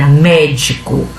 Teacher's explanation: Então a primeira é có, a segunda é de e a terceira é mé. Então de trás para frente é acentuada a terceira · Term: proparoxítona